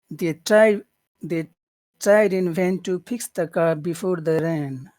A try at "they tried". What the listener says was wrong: The tried or they tried? It's really important to say that E sound. They they they tried in vain to fix